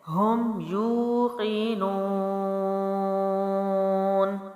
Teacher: نو جو ہے واو مد ہے اور ہم نے پڑھا تھا واو مد کے بعد والا حرف ساکن ہو، یعنی آگے نون ہے تو حروف مد 3 الف لمبا کریں گے